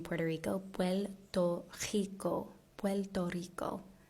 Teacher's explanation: the last way i've heard the r pronounced is with an l sound